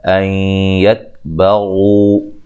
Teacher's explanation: ان یکبغوا یہاں نون ساکن کا ادغام مع الغنہ ہے